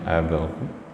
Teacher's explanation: Jadi kumnya yang pertama itu nggak usah ditahan Pak ya, jadi itu kan idhar jadinya ya.